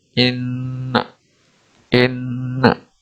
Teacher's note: Terdapat tasdid, maka cara bacanya adalah mendengungkan huruf nun. Cara bacanya adalah dengan mendengungkan dua harokat.